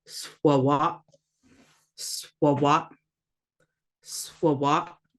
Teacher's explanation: We got the schwa making the sound, the A making the ah, swawap, and then the glottal stop that just stops it.